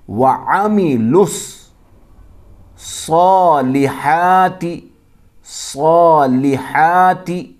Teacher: لام کو ملائیں گے صاد کے ساتھ